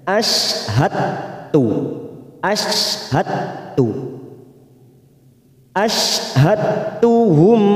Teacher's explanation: memasukkan huruf yang mati huruf Dal sukun kepada huruf berikutnya huruf berikutnya yaitu huruf ta dengan Menghilangkan qalqalanya · Dal sukun kepada huruf berikutnya huruf berikutnya yaitu huruf ta dengan Menghilangkan qalqalanya sifat qalqala dari huruf Dal ini hilang